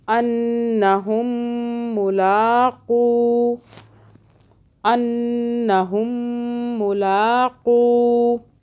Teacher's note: پھر یہاں پہ نون مشدد ہے، نون کو ہم 2 سیکنڈ کے لیے غنہ کریں گے یہاں پہ، اور آگے میم مشدد ہے، یہاں بھی ہم میم کو ہونٹوں کو دبا کے ایسے کر لیں گے، غنہ سا کر لیں گے.